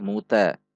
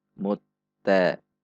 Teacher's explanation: Karena sifatnya syiddah, maka seperti tertahan sejenak. Mutta. Ta, 1 ketuk, 1 harokat.